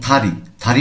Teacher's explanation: কি ত সান্দিগুতের উচ্চারণ হচ্ছে ত সান্দিগুতের উচ্চারণ যদি ত হয় শব্দের শুরুতে যখন আসবে তখন এটিকে আমাদের পড়তে হবে ত এর মহাপ্রাণ